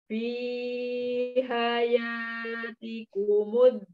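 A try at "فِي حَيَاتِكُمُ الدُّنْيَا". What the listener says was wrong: dunya idhar sapawi ya. Idhar sapawi, idhar yang sangat ini. Idhar mutlak. Harusnya idgham jadi idhar. Dunya. Fi hayatikumud dunya.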